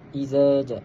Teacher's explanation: Jadi pada ayat yang pertama, iza ja, kita dapat lihat bahawa terdapat hukum mad wajib muttasil. Hukum mad wajib muttasil dengan kadar bacaan 4 atau 5 harakat.